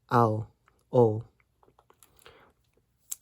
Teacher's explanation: If your diphthong ends in an U sound, like ow, o, then you'll replace the U vowel with a W consonant